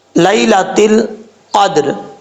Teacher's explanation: لام کے بعد یا لین ہے، یا مدہ نہیں ہے، یا لین، لام یا زبر لی، اس کو لمبا نہیں کرنا۔ لیلۃ القدر، قاف حروف مستعلیہ میں سے ہے، پر پڑھا جائے گا۔